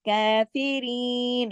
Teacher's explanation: کھڑی زبر جو ہے وہ ایک الف کے برابر یعنی 2 حرکات کھینچی جاتی ہے۔ کافرین، اسی طرح رین کے ساتھ کافرین، یا مدہ ہے، اس کو بھی 2 حرکات تک کھینچ کر اس کا پورا حق ادا کرتے ہوئے ہم یہاں پر رکیں گے۔